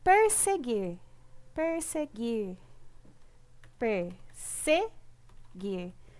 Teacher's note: A sílaba mais forte é o gir.